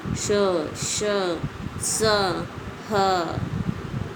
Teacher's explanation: ऊष्म व्यंजनों का उच्चारण एक प्रकार की रगड़ अथवा घर्षण से उत्पन्न गर्म वायु से होता है।